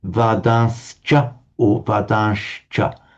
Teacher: you have got to pronounce as two distinct sounds, the sibilant, which you can say is a se or a sh, and the ch at the end has got to come out as a distinct ch. So you can say, I think we've established, you can say correctly, vadascha or vadashcha, but you've got to pronounce them both distinctly, ch or ch.